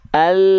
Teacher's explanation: huruf lam itu keluar dari samping lidah depan bagian kanan samping lidah depan bagian kiri keduanya nih menyusur sampai ke ujung lidah ya oke itu disentuhkan ke langit-langit maka ketika kita lafalkan huruf